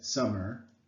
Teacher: So I think that summer, based on the way I say it, summer, I think that some is emphasized and mer is not.